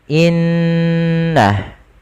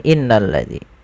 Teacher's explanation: menahan suara gunnahnya dan menahan suara n-nya sepanjang 2 harokat, baru dilepaskan. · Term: bacaan gunnah